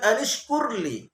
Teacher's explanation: Ini ra-nya ra tafhim, tebal. Karena sebelum huruf ra, ya, ada huruf hijaiyah yang berbaris dhammah, maka dibaca tebal, bunyi tebal.